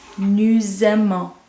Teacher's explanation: We're going to hear that S because it's in front of a vowel. Nous aimons becomes a Z sound. And then we are going to hear the ON, but you're not going to hear the S again.